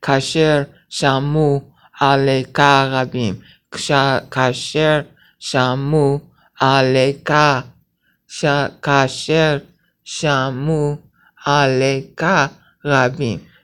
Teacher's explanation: So kasher shamu, because the aleka begins with an ah sound, and the u and the ah sort of run together as one syllable. You're not creating a syllable. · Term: elision